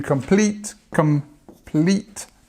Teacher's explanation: stress on the second part of the word